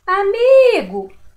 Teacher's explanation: Demorei mais para falar o mi. Então, a sílaba tônica, a sílaba mais forte é o mi.